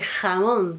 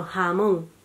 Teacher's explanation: La aspiración de la velar fricativa sorda, es decir, la que yo os decía de jamón, que no se dice jamón, sino jamón.